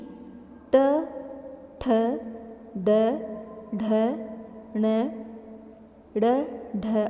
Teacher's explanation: फिर री ट ठ ड ढ ण ड़ ढ और श इन सभी में हमारी जीभ ऊपर मुर्धा को स्पर्श करती है इसीलिए यह सभी मुर्धन्य स्वर व्यंजन के नाम से जाने जाते हैं